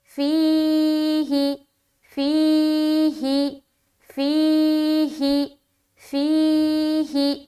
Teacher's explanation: یا مدہ کو ایک الف کی مقدار کے بقدر کھینچ کر پڑھیں گے، جیسے فی ہی، ہا کے نیچے زیر کی حرکت ہے، زیر کو جلدی پڑھیں، تھوڑا بھی نہ کھینچے